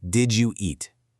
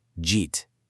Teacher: And to see just how extreme this linking can get, take a simple question like, "Did you eat?" In a casual conversation, a native speaker will often crush all those sounds together into one single sound. Jeet sounds almost like a totally different language, but it's completely natural.